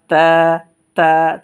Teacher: জিহ্বার আগা আছে না, সামনে 2 দাঁতের গোড়ার সাথে ইনশাল্লাহ আমরা লাগিয়ে দিব, এক আলিফ টেনে পড়ব, তা, তা, চিকন আওয়াজে পড়ব।